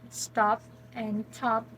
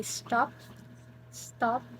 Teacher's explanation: if it's aspirated which is top top so you can feel that there's a puff of air but when it is an unaspirated tea um for example we